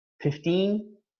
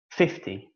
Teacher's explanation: 15 the stress is on the second of course 50 the stress is on the first syllable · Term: word stress